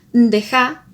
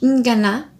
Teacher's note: Se colocan elementos nasales al inicio de algunas palabras y estas funcionan como diferenciador.